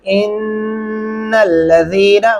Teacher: इन्नल्लज़ीना, क्या पढ़ेंगे? इन्नल्लज़ीना गुन्ना करेंगे और ज़ीना ज़ाल को नरमी से अदा करेंगे।